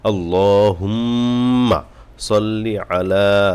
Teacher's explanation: প্রথম মিম কে গুণনা করতে হবে